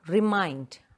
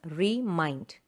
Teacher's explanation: So that is a word, remind. Mind, the second syllable is stressed. Two syllables, remind.